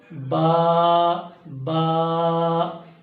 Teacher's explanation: با کا مخرج ہے دونوں ہونٹوں کے تری والے حصے سے، یعنی آپ کے دونوں جو ہونٹ ہیں ان کے گلے حصے سے ادا ہوتے ہیں.